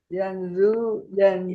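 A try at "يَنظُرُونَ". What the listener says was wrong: Nah, ya bukan zu tapi bu. Ya, dicekungkan lidahnya.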